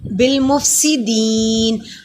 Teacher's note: بالمفسدین فا کو ادا کرنے کے لیے اوپر والے سامنے دندوں کو ہونٹوں کے درمیان میں لگائیے. سین پہ سٹی کی آواز آئے گی